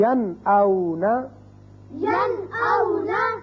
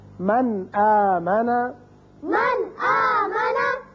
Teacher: نون ساکن کے بعد حمزہ آ گیا، لہذا نون کو ظاہر کر کے پڑھیں گے